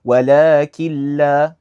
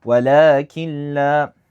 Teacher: It's literally as if the noon's not there. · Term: without ghunnah